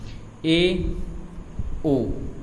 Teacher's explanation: अर्धसंवृत का मतलब आधा मुख बंद होगा, जिसमें ए, ओ, इनमें आधा मुख बंद होगा जब इनका उच्चारण करोगे बोलोगे तो।